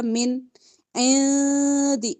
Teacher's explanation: من نون ساکن کے بعد عین ہے اظہار ہوگا من عندی اخفا ہوگا نون ساکن کے بعد دال ہے عندی